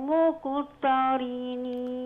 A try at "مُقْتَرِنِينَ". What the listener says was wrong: مقتا مش طاء.